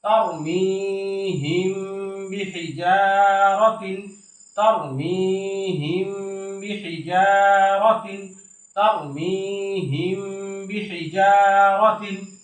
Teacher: এই মিম সাকিনের পরে এই বা আসার কারণে এই মিমটাকে আমরা গুণনার সহিত গোপন করে পড়ছি। এই জন্য এটাকে মিম সাকিনের ইকফা বা ইকফায়ে শাফবি বলা হয়।